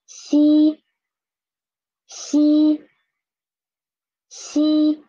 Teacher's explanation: For xi, don't make your tongue touch your upper gum. Make it be close to your upper gum, okay?